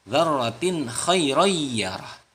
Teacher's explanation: Mithqala dzarratin khairah. Nah, bacaan tanwin dzarratin bertemu dengan kha itu dibaca idhar, dibaca jelas kha-nya.